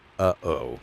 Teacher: representing a glottal stop sound at the beginning of words, like the break in uh-oh